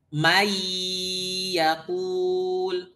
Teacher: itu hanya memasukkan nun ke ya tidak disertai gunah. Seolah-olah nunnya hilang. May kayak enggak ada nun.